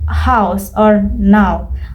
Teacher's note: Start with a more open, low sound and smoothly glide up to the high, back, rounded positions. Your mouth will close slightly as you reach the O sound.